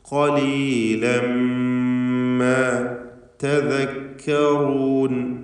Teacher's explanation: ഖാഫിന് തഫ്ഖീം പൂർണ്ണമാക്കി നൽകണം. ഖലീലൻ ഖ എന്ന അതിൻ്റെ മഖ്റജിൽ നിന്നുമുള്ള സ്വരഭാരത്തോടെയുള്ള തടിപ്പിച്ചുകൊണ്ടുള്ള ശബ്ദമാണ് കൊടുക്കേണ്ടത്.